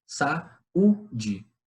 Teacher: O U, ele tem, nesse caso, a força de uma vogal. Por isso que a gente chama o I e o U de semivogal, porque em alguns momentos eles têm uma força de vogais, mas em outros momentos não.